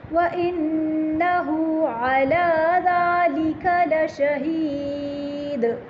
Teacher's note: یہاں پر اب وقف آنے والا ہے، وَإِنَّهُ عَلَى ذَلِكَ لَشَهِيدٌ، دال پہ قلقلہ کریں گے، دال ساکن کر رہے ہیں